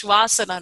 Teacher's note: But when you make that Sanskrit grammar, when you combine the dog, Shvanasana together, the N disappears